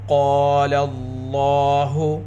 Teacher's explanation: لفظ اللہ کے لام کو پر پڑھیں گے اور لفظ اللہ کے لام کو 2 حرکت کے برابر کھینچ کر پڑھیں گے · قاف حروف مستعلیہ میں سے ہے، قاف کو پر پڑھیں گے۔ لام کے اوپر کھڑا زبر، لفظ اللہ کے لام سے پہلے لام کے اوپر زبر۔